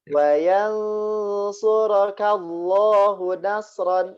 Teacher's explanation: Ini hu-nya satu harokat saja Pak, langsung ke huruf na.